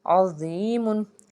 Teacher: यहाँ पे जो ज़ौ है वो हरूफ मुस्तालिया का हर्फ है, इसको पुर पढ़ेंगे · या साकिन से पीछे ज़ेर है तो एक अलिफ के बराबर इसको खींच के अदा किए